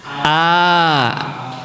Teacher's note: Hamzah itu keluar dari halku dari tenggorokan Bapak Ibu.